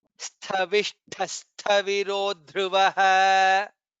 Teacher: शविष्ठ सविरो ध्रुवः. It is half sa and then tha mahaprana.